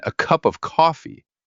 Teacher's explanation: Cup and coffee are clearer. A and of are usually weak. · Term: weak forms